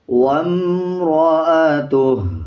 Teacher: وَامْرَأَتُهُ، واو کے اوپر شد ہے، جب پچھلی الفاظ پہ وقف کر لیں گے یعنی آیت کمپلیٹ کر دیں گے، پھر واو کا جو شد ہے اس کو ختم کر دیں گے. واو کو میم کے ساتھ ملا کے پڑھا جائے گا، میم کے اوپر جزم ہے اور میم سے پہلے جو الف ہے اس کو سکپ کر دیں گے